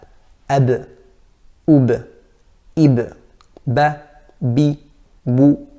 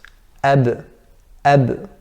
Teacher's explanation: with the letter ba, the makhraj is by closing the lips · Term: makhraj of ba